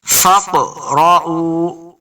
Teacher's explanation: قاف حروف قلقلہ سے ہے اور ساکن یہاں پہ ہے تو ہم نے اس کو خوب واضح کر کے پڑھنا ہے، جنبش کے ساتھ پڑھنا ہے.